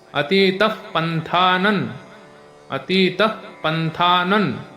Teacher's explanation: त्याला थ त्याला एक काना त्यानंतर न वर एक अनुस्वार पण अनुस्वारानंतर त शब्द आहे त्यामुळे त्या अनुस्वारचा उच्चार न होणार म होणार नाही